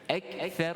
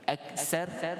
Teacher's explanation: huruf tha pada makhrajnya di hujung lidah.